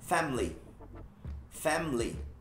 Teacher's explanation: Cortando o I, faz um squeeze do I.